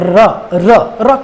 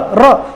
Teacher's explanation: ऐसा व्यंजन जिसके उच्चारण के दौरान जीवा का अग्र भाग 2-3 बार लुढ़कता हो और साथ ही उसके आसपास के भाग में कंपन भी होता हो, तो उसे लुंठित या प्रकंपित व्यंजन कहा जाता है।